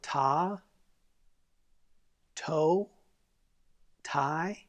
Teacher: The tip of your tongue is striking at the top of your teeth. It's not coming between the teeth, it's striking behind the teeth. Instead of saying a TH consonant, you're saying a T consonant.